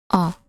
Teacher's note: जीभ के मध्य भाग से उच्चारित होने वाली ध्वनि है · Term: मध्य स्वर